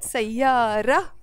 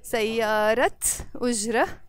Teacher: So the word sayara alone, but sayarat ujra with a t when it's followed by the word ujra.